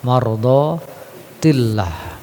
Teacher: kembali tarqiq ya, karena lafzul jalalah sebelumnya kasroh